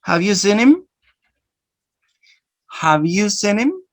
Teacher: Notice you're going to make two processes here. Elision, because you take out the sound ha, and linking, because you join a consonant with a vowel sound.